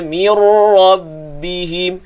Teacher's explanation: Mi satu harakat terus berpindah ke makhraj ra, jangan dengung. Mir terus tebal. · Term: idgham tanpa gunnah